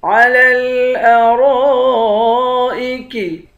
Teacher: را کو موٹا پڑھیں گے، را کے بعد الف ہے، الف پر مد ہے، اس مد کو 5 الف کی مقدار کھینچ کر پڑھیں گے